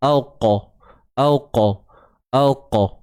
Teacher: huruf qaf adalah huruf yang tebal. Maka lantunan yang kecil tu pun masih lagi dikekalkan sifat tebalnya. So, dia takkan jadi waqa. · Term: qalqalah sughra